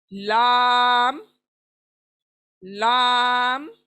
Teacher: ला हमारी जबान है, इसका किनारा साइड यानी हमारे दांतों के जो नुकीले हिस्से हैं उनको जबान टच होती है। किनारे वाली हमारी जो जुबान है वो ऊपर के दांतों को यानी नुकीले दांतों को टच होती है